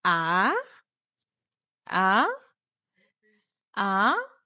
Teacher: ببدأ إن هي واطية شوية للدرجة الثالثة، وبعد كده ببتدي أعلى · So the pitch begins slow and then gradually rises. It's written as rising dash above the vowel of the number 2 امبيني. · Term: النغمة التانية, rising tone